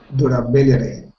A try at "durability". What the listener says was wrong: Good. So stress falls on that syllable there.